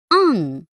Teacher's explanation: इसे अनुस्वार कहते हैं। इसका उच्चारण नाक से होता है। अंग का चिन्ह एक बिंदी होता है।